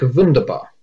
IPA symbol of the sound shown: v